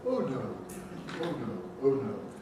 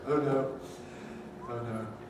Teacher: Nowadays, even people of my age say, oh no, we've lost that old rounded throughout quality